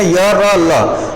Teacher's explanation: य का स्थान हो जाएगा तालव्य से, र का हो जाएगा मूर्धन्य से और ल का हो जाएगा दंतय से। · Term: अंतस्थ व्यंजन